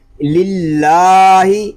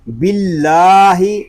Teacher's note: اللہ پاک کا لام باریک کھڑا زبر،